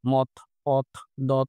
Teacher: জিভের সামনের অংশ দ্বারা ওপরের পাটি দাঁতের নিচের অংশ স্পর্শ করে দন্তধ্বনিগুলো উচ্চারিত হয়।